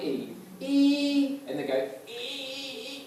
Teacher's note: it's a very strangulated sound